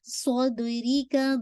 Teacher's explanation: ری کو بالکل آپ نے شارپ رکھنا ہے، باریک کرنا ہے · صود کو ہیوی کیجیے گا وتھ ویسلنگ کے ساتھ